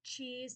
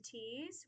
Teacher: We stopped that affricate ch to t.